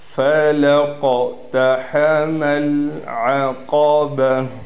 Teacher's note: قاف کو موٹا بھی پڑھنا ہے اور قاف پر قلقلہ بھی کرنا ہے۔